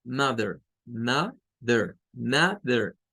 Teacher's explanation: Pero vean que no es una E, es un schwa. Pero aquí está la R, miren, aquí está la R.